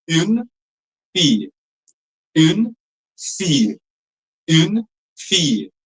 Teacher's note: You have to drop the sound a bit because the L sound is silent. The I just rolls a little longer.